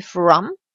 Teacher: ici le O est quasi muet, donc on dit from